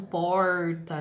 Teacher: O R que é a ponta da língua vai para trás, recua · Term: R caipira